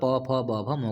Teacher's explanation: यहाँ पर आपके होठ टच होंगे, ऊपर वाला होठ आपके नीचे वाले होठ से टच होगा प फ ब भ म को बोलते समय।